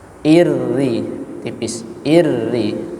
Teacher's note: kalau kita menemukan huruf ra yang berharokat kasrah itu pasti dibaca dengan tipis